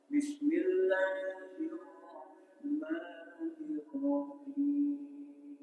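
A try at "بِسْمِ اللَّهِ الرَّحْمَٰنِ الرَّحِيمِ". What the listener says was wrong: Salah itu bismillahnya, sinnya salah itu.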